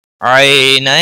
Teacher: یا لین ہے، تھوڑا نرمی کے ساتھ کھینچ کر ادا کریں گے · تنوین کے بعد حروف یرملون کا یا آیا ہے، ادغام باغنہ ہوگا